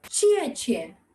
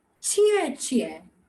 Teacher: the down and up tone, the third tone